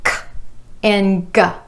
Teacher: k and g, both made by bringing the back of the tongue up to the soft palate